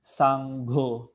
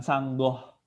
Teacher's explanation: GHO dibaca go. Go, bukan goh, bukan GOH, tapi dibaca go. Sanggo, bukan sanggoh, sanggo.